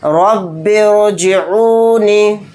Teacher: اگر رائے ساکنہ سے پہلے زیر اصلی ہوتا تو را کو باریک پڑھتے، اور رائے ساکنہ سے پہلے یہاں پر زیر عارضی ہے تو اس لیے اس را کو موٹا یعنی پر پڑھیں گے